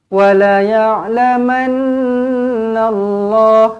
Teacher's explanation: Nun sabdu wajibul gunah dengungkan dua harakat